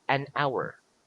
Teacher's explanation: some words that begins with the letter H starts with a vowel sound because the letter H is silent